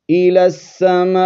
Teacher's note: ثم استوى الى السماء، حمزہ زیر ای، لام سین زبر لس، الس، سین زبر سا، میم الف مد زبر ما، حمزہ زیر ای، الى السماء، سین کو جماؤ کے ساتھ ادا کریں گے، شد ہے، اور آگے مد متصل ہے، 4 الف کی مقدار کھینچ کر پڑھیں گے